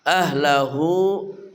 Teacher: ha dari pangkal kerongkongan kita